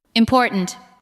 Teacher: Listen to the word important. Important. The second part receives the strongest beat. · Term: word stress